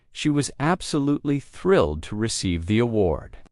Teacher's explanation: You notice how some words are stressed, thrilled award, while others are spoken quickly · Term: stress pattern